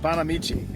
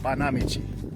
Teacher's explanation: it actually is accent on the second syllable